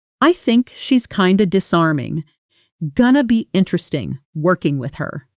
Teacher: kind of almost always becomes kinda. Going to becomes gonna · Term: connected speech